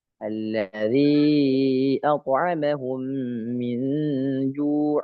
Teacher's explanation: Jadi lisyafatainil wawu ba'un mim, dan huruf syafatain itu ya atau syafatain itu terdapat huruf wawu ba dengan mim ya, maka di sini mim berada di dua bibir. Jadi kedua bibir ini ya dirapatkan dengan ditambahkan gunnah